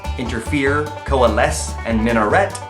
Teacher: Interfere, coalesce, and minaret all have an accent on the third syllable.